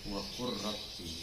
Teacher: Huruf yang pertama masuk pada huruf yang kedua. Jadi sama sekali gak nampak huruf pertama itu. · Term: idgham